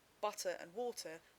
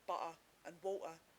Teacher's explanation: Typically it occurs at the end of the word or before another consonant, so but becomes but and network becomes network. But where the following syllable is a weak vowel, EE is much less likely to glottalize than Cockney, so butter and water are likely to stay the same in EE, but become butter and water in Cockney.